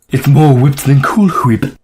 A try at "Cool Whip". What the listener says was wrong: Cool Whip. Why do you keep putting so much emphasis on the H? Just saying Cool Whip.